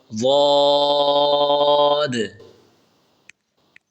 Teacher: زبان کی کروٹ بائیں یا دائیں طرف ملا کے پڑھیں